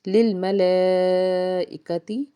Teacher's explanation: لام کے اوپر بڑی مد اور آگے حمزہ ہے اسی کلمہ میں، تو اس سے مد متصل کہتے ہیں۔ اس کو 3 سے 5 الف کے برابر کھینچ کے ادا کریں گے